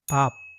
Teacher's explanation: The first sound in the word 밥 is the Hangeul B. It's similar to the English B, but it's produced with much less vibration of the vocal cords. So for those hearing it for the first time, it might even sound closer to a soft P.